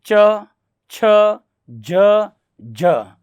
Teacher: अपनी जो जीवा होती है वो ऊपर किससे टकराती है? तालु से। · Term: तालव्य